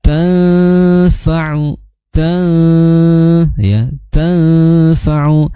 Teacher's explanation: Dibacanya dengan ditahan selama dua harakat disertai dengung ya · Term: ikhfa ausad